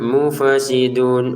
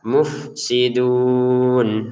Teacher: Enggak ada e-nya, enggak ada pantulannya.